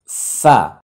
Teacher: 14 number মাখরাজ দাঁতগুলো ঠোটে লেগে যাচ্ছে